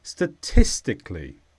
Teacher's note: It's an adverb and the stress is on tis.